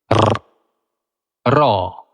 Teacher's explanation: জীবটা কাঁপতে কাঁপতে ঠেকবে আটকাবে ছেড়েও দেবে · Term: কম্পিত ধ্বনি